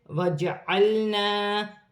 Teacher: جیم ساکن ہے، حروف قلقلہ میں سے ہے، قلقلے کے ساتھ ادا ہوگا